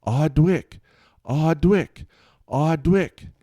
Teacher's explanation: making a W sound instead of pronouncing the R sound